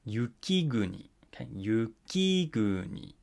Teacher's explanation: All right, so because of the phrase accent rule that we looked at the beginning of this lesson, this goes up after the first syllable, but then, as you can see, it falls back down in the middle of the word, hence the name middle high pitch